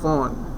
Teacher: which is voiceless, labiodental, fricative, and the example that we have is phone